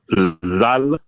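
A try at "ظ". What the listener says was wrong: Not zal. It's zo.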